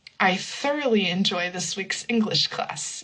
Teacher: So thoroughly will also be an unvoiced th